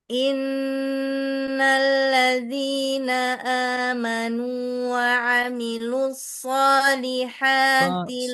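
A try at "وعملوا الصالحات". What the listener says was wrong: So kurang tebal. So. Hentak tasdid. Wa amilus so. sekedar double. Naikkan suara pada sod sukun.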